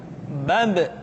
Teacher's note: ketika mati maka terdengar suara pantulan bab kesalahan sering terjadi seringk ba lupa untuk dipantulkan suaranya perhatikan